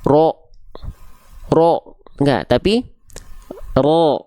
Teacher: bunyi vokal O tebal itu bukan karena kita memonyongkan, memuncungkan, memanyungkan, memajukan mulut kita, tapi mengangkat bagian pangkal lidah